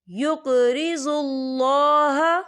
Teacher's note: अल्लाह का नाम पुर पढ़ा जाएगा क्योंकि अल्लाह के नाम से पहले पेश है।